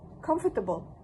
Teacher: the participant added the extra schwa sound between the t and b sounds, resulting in 4 syllables instead of the 3 in the reduced Oxford form